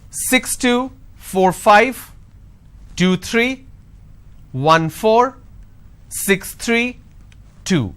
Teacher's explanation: the moment I drop my tone that means it's the end of the series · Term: intonation